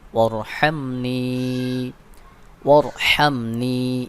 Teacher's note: এখানে এই হালকের মধ্যখান থেকে অর্থাৎ গলার মধ্যখান থেকে চাপ দিয়ে উচ্চারণ করবেন